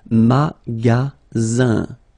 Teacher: Then you get the sound Z, alright? And then the ending here is IN, so it's nasal, goes in your nose, and it's un.